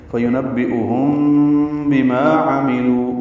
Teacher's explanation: ہم میں میم ساکن کے بعد با آنے کی وجہ سے اخفاء شفوی ہے.